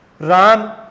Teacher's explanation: रा को काफी लंबा खींचकर बोला गया है, इसका मतलब राम बोलने में जो समय लगा है वो ज्यादा लगे है। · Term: प्लूत स्वर